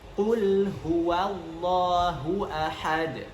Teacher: Kemudian di akhir itu ada huruf dal, yang mana huruf dal di sini harus diqalqalahkan. Qalqalah maksudnya adalah dipantulkan menjadi qul huwallahu ahad.